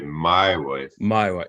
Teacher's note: it's got to be emphasis on the end syllable